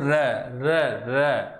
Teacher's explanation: ऐसा व्यंजन जिसके उच्चारण में जीभ की नोक को 2-3 बार कंपन करना पड़ता है या लुढ़कना पड़ता है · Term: लुंठित व्यंजन